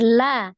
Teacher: Di akhir. lam fathah tanwin diwakafkan itu dirubah menjadi lam fathah 2 harokat, namanya mad iwad